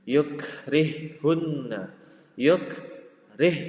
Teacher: Ha yang pertama sukun dan yang kedua berharokat, maka ha yang sukun ini dimasukkan ke ha yang kedua, menjadi ha yang kedua bertasydid